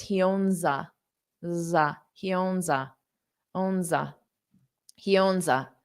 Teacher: this owns is a little bit of a voiced sound, which is why I wrote it as a Z, because it's voice.